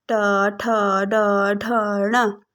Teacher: मूर्धन्य कठोर तालु के अगले भाग से ट, ठ, ड, ढ, ण ये वर्ण हमारे कठोर तालु के अगले भाग से निकलते हैं।